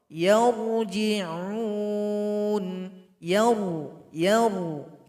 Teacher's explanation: bibir bawah ketika baca huruf-huruf yang Sukun dan dia dibaca tebal bibir bawah agak naik ke atas yang yang itu menandakan pangkal lidah sudah naik ke atas